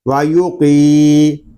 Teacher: قاف کو ہم پر پڑھیں گے اور قاف کو ہم ایک الف تک کھینچ کر بھی پڑھیں گے کیونکہ یہاں پہ یا مدہ ہو رہا ہے.